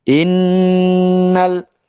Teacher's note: Nun sendiri memiliki sifat gunah ditambah dengan tasdid sehingga gunahnya lebih kuat